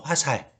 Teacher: 시옷 앞에 리을이 오면 어떻게 한다고요? 탈락해서 화살이 되는 거죠